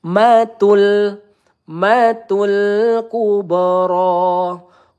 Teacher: mim bertasdid kita tahan terlebih dahulu ya, dua atau tiga harakat.